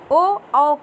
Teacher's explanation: कंठोष्ठ, यानी कंठ और ओष्ठ के मिश्रण से ये ध्वनियाँ बाहर निकलती हैं, इसलिए इन्हें कंठोष्ठ ध्वनियाँ कहते हैं।